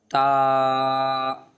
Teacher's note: اوپر کے جو دانت ہوتے ہیں دو، اس کے اندر سے جیب لگے گی تا میں، اور باریک کر کے پڑھیں گے تا کو